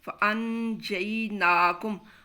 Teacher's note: قاعدہ ہے اخفاء کا، نون کو مخفی کرنا ہے